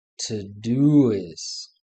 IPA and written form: ˈtoʊ.doʊ.ɪst (Todoist)